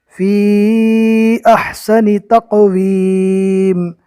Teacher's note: فی مد ہوگا، کم سے کم اس کو 2 الف کے برابر کھینچ کر پڑھیں گے